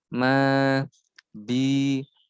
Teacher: ini dibaca ma, bi, 2 ketukan saja, tidak boleh lebih. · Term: mat tobi'i